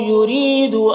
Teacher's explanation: युरी में रा को बारीक पढ़ना है और या मद्दा है